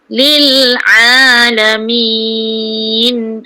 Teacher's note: Sebutan ain ni pertengahan halkum.